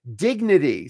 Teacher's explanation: The T is a voiced, flapped D